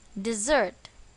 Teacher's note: Where is the stress? On the second syllable, dessert.